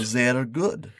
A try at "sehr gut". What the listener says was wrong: No, don't roll the R's. This isn't Spanish. Sehr gut.